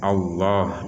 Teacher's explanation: Lafal Allah pada Quran Madinah tidak ditulis berharokat panjang, karena orang-orang Madinah sudah terbiasa jika ada kata seperti ini maka akan dibaca Allah dengan bacaan yang panjang walaupun tidak ada tanda panjang